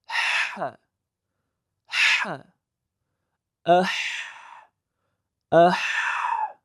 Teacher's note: Ha harfini mahraji halqumning o'rta qismi ekan. · halqum devori va xildoq orasida kichik tuynuk hosil bo'lib, ana shu yerdan o'tayotgan havoning sirg'alib chiqishi orqali ha harfi talaffuz qilinadi. Bunda siz ha ni biroz bosim bilan talaffuz qilishga e'tibor qilishingiz kerak.